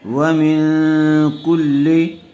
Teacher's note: منہا، واو زبر وا، میم نون زیر من، ومن، یہاں نون ساکن کے بعد حروف اخفاء میں سے کاف آیا ہوا ہے، اس لیے غنّے کے ساتھ اخفاء ہوگا۔